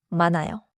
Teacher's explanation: 많아요에서 많아요처럼 히읗을 또렷하게 넣지 마세요. With the 니은 히읗 cluster before 아요, 히읗 is not pronounced and 니은 links forward.